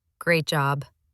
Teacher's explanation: The flat, dry tone told me she meant the opposite. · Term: sarcasm